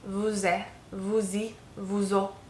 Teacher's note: when it's in front of a vowel, it kind of takes on a z sound